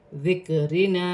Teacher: रा बारीक पढ़ी जाएगी